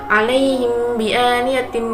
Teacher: bacaan ikhfa syafawi sebab mim sukun bertemu dengan huruf ba